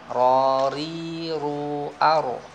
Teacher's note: Ro ri-nya tipis, ro-nya tebal, ru-nya tebal, ar-nya tebal. Yang tipis ketika ri.